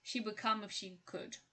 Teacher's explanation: when d is followed by a k sound the d is often pronounced as a g sound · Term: assimilation